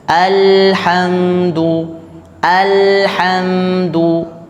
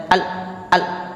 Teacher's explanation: lam tidak juga di berhentikan bunyinya Biarkan mengalir alhamdu alhamdu bukan Al Al Nah itu terhenti al al al